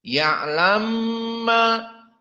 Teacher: yasfaahu maka di sini yam maain maka mimnya adah yalamma dan mim musyaddadah seperti Nun musyaddadah maka makhrajnya di khaisum dan dua harakat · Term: gunah